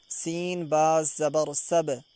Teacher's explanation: با کے اوپر جزم یہ حروف قلقلہ کے 5 حرفوں میں سے ہے تو اس کی آواز بھی واپس ٹکر کھا کے واپس آئے گی۔